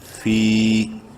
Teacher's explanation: یا مدہ ہے، فا کو بھی ایک الف کے برابر لمبا کریں گے. فی.